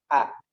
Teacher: A ini ya makrotnya di tenggorokan paling bawah A. Hurufnya memiliki sifat tipis A. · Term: huruf hamzah